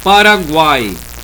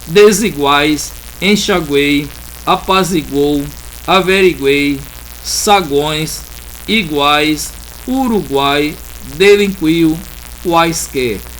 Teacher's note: Tanto o U quanto o Y a gente fala rápido, mas o A não, ele está bem expressivo. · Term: Tritongo